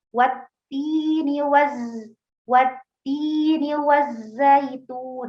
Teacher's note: Kalau untuk huruf zai itu tidak ada udara ya, tidak ada nafas yang mengalir ya, tapi suara yang mengalir.